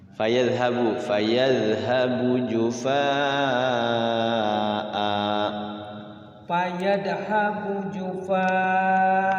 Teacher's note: Iya, jadi A-nya panjang. Namanya mad iwad itu.